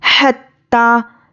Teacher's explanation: इसको अदा करने में मुंह से हवा बाहर निकलनी है। हा, हत्ता, ता पर तजदीद है और खड़ा ज़बर है, सख्ती करना है और एक अलिफ के बराबर खींच कर पढ़ेंगे। हत्ता, ता हमज़ा ज़बर ता, तो हमज़ा साकिना को झटके से पढ़ना है।